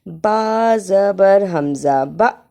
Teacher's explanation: با زبر حمزہ با یہاں الف کے اوپر جزم ہے اور الف پر جب بھی کوئی حرکت ہو تو وہ الف نہیں رہتا حمزہ بن جاتی ہے اس لیے یہاں جھٹکا لگا کے پڑھنا ہے